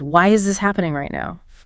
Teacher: Faster pace, sharp, upward tone.